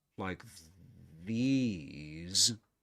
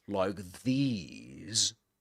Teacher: It goes up first, then it goes down, and at the end it goes up again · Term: full rise intonation